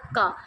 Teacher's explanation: ਜਿਹੜੀ ਹਵਾ ਆਉਂਦੀ ਹੈ ਉਹ ਇੱਕਦਮ ਰੁੱਕ ਕੇ ਬਾਹਰ ਆ ਜਾਂਦੀ ਹੈ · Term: ਡੱਕਵੇ ਵਿਅੰਜਨ